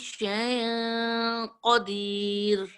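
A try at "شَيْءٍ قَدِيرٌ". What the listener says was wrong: شیء حروف لین قدیر ہیوی ہے نا. اونلی جو چیز میں نوٹ کر رہی ہوں آپ کا قاف اس کو خوبصورت کیجئے.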